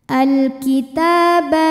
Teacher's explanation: ta mad tabi'i muqaddar karena ta berbaris fathah panjang, maka ta panjang 2 harokat.